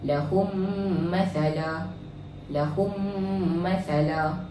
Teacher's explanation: Cara bacaannya ialah memasukkan bunyi mim ke dalam mim yang berbaris serta dengung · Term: idghamislain, idgham mislain